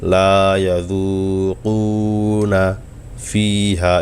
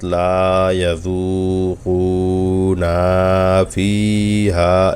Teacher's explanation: যেমন ধরুন লা ইয়াযুকুনা ফিহা, এই যে না, নুনে কিন্তু কোনো টান নাই। কিন্তু আমি যদি একটানা পড়তে যাই, অর্থাৎ লা ইয়াযুকুনা ফিহা, এভাবে টানটা হয়ে যায়।